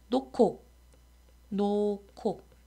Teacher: 히읗과 기억이 만나서 키읔으로 바뀌죠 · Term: 거센 소리 되기